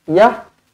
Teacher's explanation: Kerana ini adalah ta marbutah. Ta marbutah apabila berhenti, apabila kita waqaf, dia akan menjadi huruf ha mati.